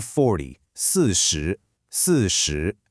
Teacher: Notice how your voice falls sharply on 四 and then immediately rises back up on 十, like a roller coaster. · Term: roller coaster tone